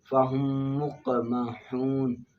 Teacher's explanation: ادغام شفی میم ساکن کو دوسری میم میں مدغم کرنا